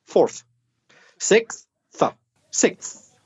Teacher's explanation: the last sound is th with your tongue between your teeth